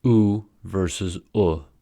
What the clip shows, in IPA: u and ʊ